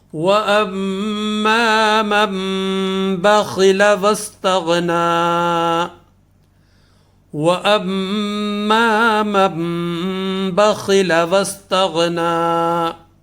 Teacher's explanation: نون جو ہے یہ ختم ہو جائے گا اور میم کی آواز یہاں پر آئے گی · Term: اقلاب